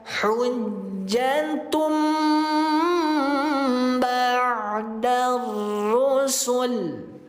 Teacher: Nun mati diubah menjadi mim. Rapatkan kedua bibirnya atau mingkem Bunda. · Iqlab yang tadinya dibaca n diubah menjadi m. Yang tadinya dibaca nun.